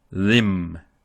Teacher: we just hear the m. We don't hear any ma, any mi, or any mu. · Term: mim sukun